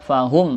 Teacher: Fahum, mim bertemu lam, namanya izhar syafawi, jelas, tidak ada dengung, tidak ada samar, jelas pokoknya